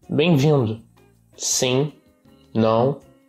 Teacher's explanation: the extreme nasalization, particularly of final M's